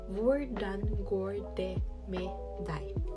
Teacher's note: DET it is silent T